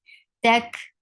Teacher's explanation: Whenever kaf and ta, be careful. Whenever ta and kaf are with sukoon, will get sifa of hums, and this is a flow of breath.